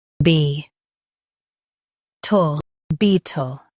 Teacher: Emphasize bee and soften tull.